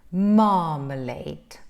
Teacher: there are three syllables three syllables you stress the first syllable